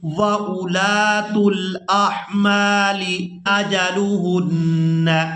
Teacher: یہاں پر ہم نے حمزہ کو بغیر کھینچے ادا کرنا ہے اور لام کو الف مدہ کی وجہ سے کھینچ کر ادا کریں گے